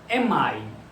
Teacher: Então, nesse connected speech, vai ficar am I, visto que aqui tinha uma consoante M e aqui tinha uma vogal. Os dois se entrelaçam e ficam um som só. Am I, mesmo que sejam palavras separadas.